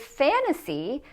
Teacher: In the word fantasy, the stress is on the syllable before the N and T